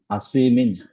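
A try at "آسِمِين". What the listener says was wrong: আসিমিন একালিফ টান হবে, সাইয়া যে সি, জেরের বাম পাশে জজম বলা ইয়া হয়েছে।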